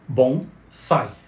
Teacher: em português assim como outras palavras de origem japonesa como Samurai a palavra bonsai pronuncia-se como a sílaba tônica em sai ou seja bom sai ela escreve sem acento gráfico assim como